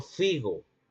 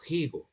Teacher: En la Edad Media, la gente no decía, por ejemplo, figo, sino decía higo, para referirse al higo, al fruto que conocemos hoy en día. Pero ya no se pronunciaba la F del latín, la F o el fricativo labiodental sordo propio del etimo, no, sino que se pronunciaba un elemento glotal, ya en la Edad Media. Entonces, por ende, la gente decía algo así como higo, como una J al comienzo.